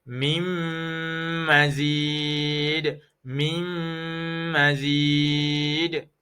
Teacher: Nun mati bertemu dengan huruf mim, hukumnya ialah idgham ma'al gunnah. Dibaca dengan dengung. Baca dengan dengung.